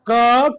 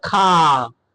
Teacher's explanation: मतलब जिनको बोलने के लिए हवा कम निकले और जिनको बोलने के लिए हवा ज्यादा निकले